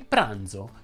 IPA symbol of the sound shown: dz